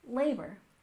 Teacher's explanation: we stress the first syllable in labor